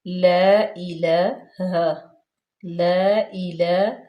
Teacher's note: لام کے اوپر فتح اشبائی ہے یعنی کہ کھڑے زبر ہے، تو اس کو ہم 2 حرکات کے برابر لمبا کریں گے، کھینچیں گے